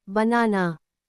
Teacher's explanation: In banana, the first and last vowels are unstressed. They both sound like soft instead of a or a. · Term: schwa